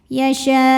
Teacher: Maka syin dipanjangkan boleh empat boleh lima harakat. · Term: mad wajib muttasil